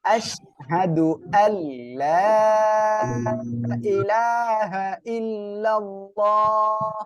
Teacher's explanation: নুন সাকিনের পরে ইদগামে বেলা গুন্নার অক্ষর লাম আসছে, এজন্য কি করব আমরা গুন্না বাদে মিলিয়ে পড়বো